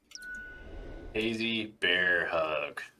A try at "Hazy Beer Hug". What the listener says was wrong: Nope. Hazy Beer Hug. Sounded like bear to me.